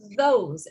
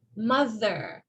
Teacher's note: it makes the sound by forcing air through the opening between your teeth and tongue, and vibrate your vocal cords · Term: voiced TH sound